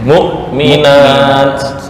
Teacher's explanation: Hamzah tuh di tenggorokan yang dekat dengan dada.